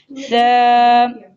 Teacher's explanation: سا کے جو نکلنے کی جگہ دونوں دانتوں کے درمیان میں زبان کو رکھ کر ادا کیا جائے گا